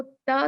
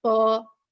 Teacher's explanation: تا جو ہے وہ لائٹ ہے، اس میں ہمس ہے، اس میں ہوا نکلتی ہے، جبکہ پا جو ہے وہ بہت ہی شدت کا لیٹر ہے، طاقتور لیٹر ہے، اس کو ہیوی پڑھا جاتا ہے۔